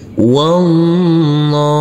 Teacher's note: huruf wawu langsung masuk ke huruf lam. Dan huruf alifnya ini kita anggap tidak ada.